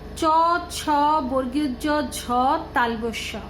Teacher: তালু ও জিহ্বার সম্মুখ, এই হলো উচ্চারণ স্থান। তালু আর জিহ্বার সম্মুখে এই বর্ণগুলি উচ্চারিত হয়। এর নাম দেওয়া হয়েছে তালব্য ব্যঞ্জন।